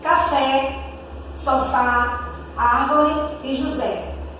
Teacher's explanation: Acento agudo indica onde está as sílabas tônicas. A sílaba tônica, som aberto.